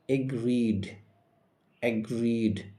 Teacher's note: দীর্ঘই সাউন্ড রয়েছে, দীর্ঘই সাউন্ডের পরে ইডি রয়েছে, তাই এই ইডির উচ্চারণ শুধু ড হবে